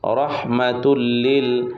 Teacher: তানবিনের বামে লাম ইদগমে বেলাগুন্না। গুন্না ছাড়া মিলিয়ে পড়তে হয়।